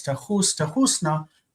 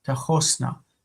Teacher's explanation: Okay, we talked about the coloring of the vowel in that middle syllable It normally is like this, tahus, tahusna, but the vowel colors itself as an O instead of a U, tahosna. And it's always the same here and here, tahosna.